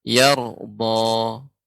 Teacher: Yar, ya, seharusnya yar, karena nanti kalau kita masuk pembahasan ra yang di tafkhim, yang ditebalkan, ketika ra sukun sebelumnya huruf yang berharokat fathah. Maka ini harus tebal.